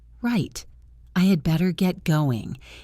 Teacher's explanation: The word right with a falling tone acts as a signal.